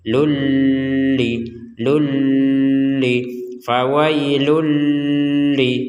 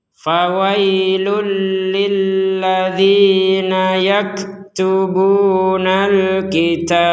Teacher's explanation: Jadi langsung tanpa dengungan